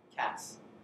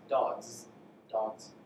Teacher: The S at the end, for one, is realized as S, cats. The other one, it's dogs. Dogs, it's a Z.